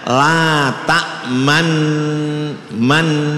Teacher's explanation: ketika dibaca tasdid atau sukun itu kemudian bibirnya mengisyarahkan kepada dhammah, artinya agak dimoncongkan